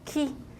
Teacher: it looks like when you're pronouncing ki, it becomes more fronted.